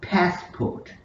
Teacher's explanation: we have to stress pass